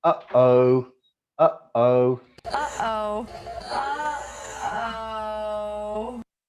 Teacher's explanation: When you say uh-oh, you have a glottal stop in the middle.